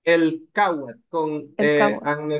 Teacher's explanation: it's gonna be pronounced as a hard K because it's after the letter L